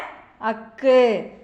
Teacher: ஆயுத எழுத்து அக்கானது தலையை இடமாகக் கொண்டு பிறக்கிறது